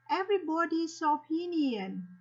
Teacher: cái phụ âm s đã được nối với âm nguyên âm o